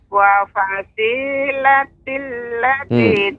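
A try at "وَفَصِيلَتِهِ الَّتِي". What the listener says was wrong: tihil. Perhatikan Nek, ada hi. Wa fasilatihil hil. Tidak wa fasilatil.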